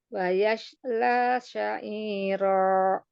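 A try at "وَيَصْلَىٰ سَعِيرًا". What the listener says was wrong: Bukan huruf shin, hati-hati huruf so dan sin. yasla sa'ira. Kurang tebal aja ya di huruf sod. Wa yasla sa'ira. Dicekungkan lidah tengahnya. Itu tafasyi. Bukan yasla sa'ira. Safir aja. Sosisu. Coba sosisu. Sosisu. Bukan shoshishu ya. Sosisu. Wa yasla. Wa yasla sa'ira.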